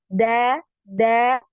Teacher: ketika pengucapan huruf dal ini tidak ada nafas yang mengalir keluar ya. Bisa dicek ya, bisa dibuktikan dengan meletakkan tangan di depan mulut.